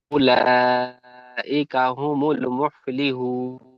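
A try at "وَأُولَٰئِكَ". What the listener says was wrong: এখানে প্রথম ওয়াওটি ছেড়ে যাচ্ছে। ওয়াউলাইকা হুমুল মুফলিহুন। ওয়াউলাইকা, কাপটি একটু হালকা টান মতো হয়ে যাচ্ছে, খেয়াল করবেন। ওয়াউলাইকা হুমুল মুফলিহুন।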